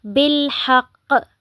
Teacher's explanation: جیسے کہ ہم نے قلقلہ میں پڑھا تھا کہ جب ہم وقف کریں گے تو آخری حرف پر جب قلقلہ کریں گے تو اس کو ہم نے زیادہ جھٹکے کے ساتھ بڑا قلقلہ کرنا ہے. ٹھیک ہے, زیادہ جھٹکا دینا ہے.